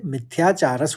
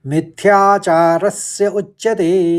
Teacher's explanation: मिथ्याचार विसर्ग पढ़ते हुए मिथ्याचारस हो जाएगा और फिर स और उच्चते उच्चते दो बार च का उच्चारण